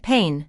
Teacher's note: the two vowels a and i create just one long vowel sound like pain, not two separate sounds